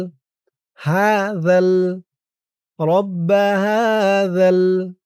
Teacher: জালের উচ্চারণটা কিন্তু নরম হবে, জিহ্বার মাথা উপরের দাঁতের মাথার সাথে লাগবে জালের উচ্চারণটা করার সময়।